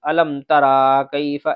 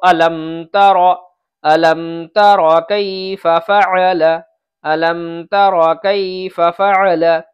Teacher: یہاں را کے اوپر بچے غلطی کرتے ہیں، اس را کو کھینچ دیتے ہیں، الم ترا کیف ایسے پڑھ دیتے ہیں۔